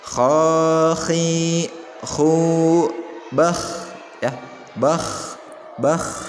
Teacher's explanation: Ada getaran ya di bagian ujung tenggorokannya, digetarkan tenggorokannya di apa? Bah, agak lidahnya agak sedikit ditempel ke dinding mulut bagian atasnya. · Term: makhraj kha